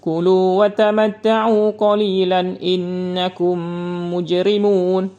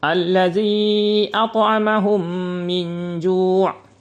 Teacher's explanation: mim sukun dengan huruf mim berharokah, supaya keduanya menjadi satu huruf mim bertasdid yang terdengar jelas gunnah atau pendengung pada huruf mim tersebut, dan dinamakan juga dengan idgham mimi ataupun idgham mislain shagir.